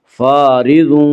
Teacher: فارض کی را کو باریک پڑھا جائے گا۔ اس کا قاعدہ یہ ہے کہ را کے اوپر زبر اور پیش آئے تو را کو پر پڑھا جائے گا، را کے نیچے زیر آئے تو را کو باریک پڑھا جائے گا، یا را کے نیچے زیر ایسے را کو باریک پڑھیں گے۔